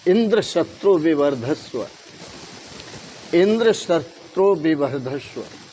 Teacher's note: इंद्र शब्द उदात्त हो गया और शत्रु शब्द अनुदात्त हो गया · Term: उदात्त और अनुदात्त